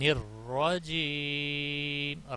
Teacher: را پر ہوگا، جب بھی اس کے اوپر زبر پیش ہوگا تو پر ہوگا ، زیر کی صورت میں باریک پڑھا جائے گا، جیم، یا